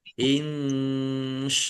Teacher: nun sukun bertemu dengan huruf shin bacaan ikhfa dibaca samar-samar.